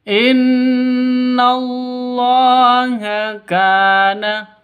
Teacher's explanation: Jadi nun nun tasydidnya berdiri sendiri. Dengung dua ketukan ghunah musyaddadah · Inna nun tasydid berdiri sendiri, berarti gunnah musyaddadah. Bukan karena ada nun mati bertemu dengan non, atau bukan karena ada tanwin bertemu dengan non.